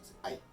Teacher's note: So you have two vowels smushed together. You have ah and e that turn into I. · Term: diphthong